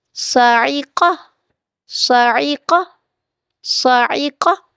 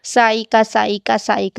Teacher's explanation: اچھا، ایک بات آپ نے یاد رکھنی ہے، حروف کو ان کے مخارج سے ادا کرنا ہے، یہ نہیں بس سائقہ سائقہ سائقہ، نہیں۔ صاعقہ، صاد اور قاف موٹا پڑا جائے گا